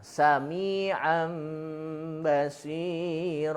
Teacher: si tanwinnya itu ketika mau masuk ke ba harus ada mimnya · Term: iqlab